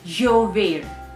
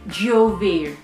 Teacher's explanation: So I am basically trying to make the Y sound the Y sound, but at the same time I'm hitting my tongue onto my palate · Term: double L sound